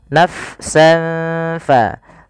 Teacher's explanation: huruf fa itu makhrajnya di bibir tapi tidak rapat bibir kita.